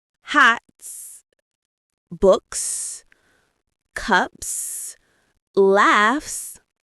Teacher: We use S after voiceless sounds, sounds made without vibrating your vocal cords. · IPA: /s/